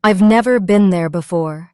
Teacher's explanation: Where did the stress fall? On never and before.